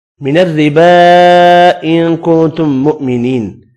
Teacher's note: 2 نون ساکن ہے، دونوں پر اخفا ہوگا، میم مشدد پر غنہ کریں گے · را باریک پڑھیں گے زیر کی وجہ سے